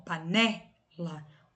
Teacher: Então, o né é a sílaba tônica e as outras duas que são mais fracas são as átonas, né? Então, ó, panela, né é a tônica, pá e lá, as átonas · Panela aí, ó, tem uma sílaba que é mais forte, que é o né. Então, o né é a sílaba tônica e as outras duas que são mais fracas são as átonas, né?